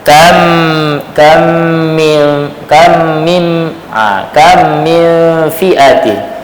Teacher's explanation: Idam mim Sakinah pada mim musyaddadah dalam dua kalimah